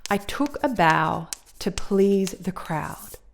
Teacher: So in that phrase, the words that are naturally more emphasized are the words took, bow, please, crowd. The other words are much weaker. They are unstressed syllables or unstressed words in this case. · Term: natural stress pattern